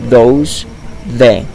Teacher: the sound the is also written th but is a fricative voiced sound